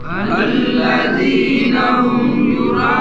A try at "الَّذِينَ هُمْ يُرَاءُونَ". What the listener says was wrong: یہ اس کو کیوں لمبا کر رہے ہو را کو؟ ماشاءاللہ اس کے اوپر لکھی بھی ہوئی ہے مد، مد کا نشان لگا ہوا ہے.